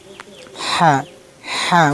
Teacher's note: হা এই যে উচ্চারণ স্থান গলার মাঝামাঝি ঠিক আমি আপনাদেরকে মাখরাজ বলে দিই। হলকের মধ্যখান, এই দেখেন আপনার গলার মধ্যখান থেকে উচ্চারণ হবে।